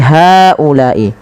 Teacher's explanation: Panjangkan huruf H sepanjang 4 harokat dan panjangkanlah huruf La sepanjang 4 harokat pula atau 5 harokat untuk kedua-duanya.